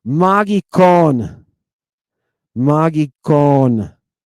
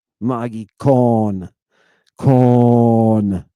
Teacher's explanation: Hear that omega with that deep, deep, deep vowel?